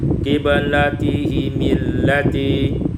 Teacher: Pada ayat 142 qiblatihimul lati, kasrah mim waslan, dibaca kasrah mim secara wasal